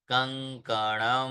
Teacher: केवल हल्का सा अनुनासिक करेंगे तो उच्चारण शुद्ध होगा